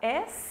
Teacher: um som sem a vibração das cordas vocais